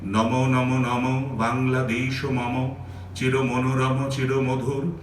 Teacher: যেখানে যেখানে মহাপ্রাণ বর্ণ আছে সেই মহাপ্রাণ বর্ণের উপর উনি একটু জোর দিচ্ছেন যাকে বলি স্ট্রেস দিচ্ছেন এই জোর বা স্ট্রেস এখান থেকেই আমি